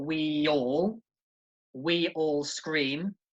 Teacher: you have a vowel sound at the end of one word and at the beginning of the next word and it creates a little sound in the middle